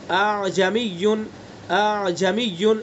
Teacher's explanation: اعجمی تسہیل کے ساتھ، پہلے حمزہ کو تحقیق سے، دوسرے کو تسہیل سے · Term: حمزہ مسہلہ